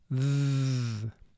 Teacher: The second sound for TH is called the voiced sound for TH because in order to make the sound, you vibrate your vocal cords as you're making the sound th